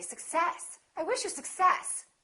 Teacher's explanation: in this case we stress the second part